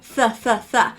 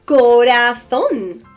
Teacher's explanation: in Castilian Spanish, we pronounce the Z, the C followed by an E, and the C followed by an I as the TH sound in English, as in th, th, th. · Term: Castilian Standard Spanish